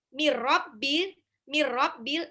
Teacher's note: Mir rabbil, nun sukun ketemu ro langsung lebur. Itu namanya idgham bila gunah. Langsung dilebur, nggak usah ditahan.